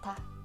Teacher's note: when you say ta, the aspiration is closer to D than T. So try not to produce too much air when you say ta.